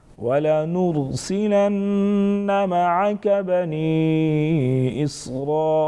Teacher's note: بنی یا مدہ ساتھ میں چھوٹا مد 2 سے 3 الف کے برابر کھینچیں گے